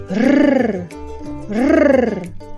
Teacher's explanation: To pronounce the Tahitian R, you will need to vibrate your tongue, or you can make noise of a drum roll with your mouth, like rrr, rrr. The tip of our tongue do some kind of vibration right behind our teeth. Let it come up in the rooftop of your mouth.